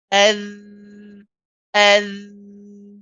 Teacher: instead of relying on your breath to pass through the gap, you're relying on the sound of your voice